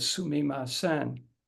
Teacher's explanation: And that's because the Japanese on, or syllable, that sound unit, each on takes the same duration of time to say